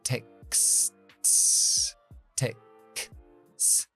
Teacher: Textos. Aquí tenemos una K, S, T, S. 4 consonantes sordas.